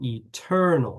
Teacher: the lexical accent when you say the word eternal is on the second syllable